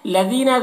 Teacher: حل الذین یہاں پر لام مشدد ہے، مشدد والا حرف پیچھے والے متحرک حرف سے ملتا ہے تو یہاں پر متحرک حرف ہا ہے۔ لذین ذال کو باریک پڑھیں گے، یا مدہ ہے ایک الف کے برابر کھینچیں گے